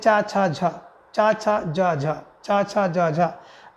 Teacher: च छ ज झ स्पर्श संघर्षी व्यंजन है